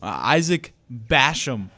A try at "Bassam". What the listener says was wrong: people like to pronounce it Basham because of where we live.